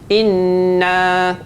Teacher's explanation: kita kena ingat nun sabdu dengan mim sabdu baca dia mesti kena ada dengung sikit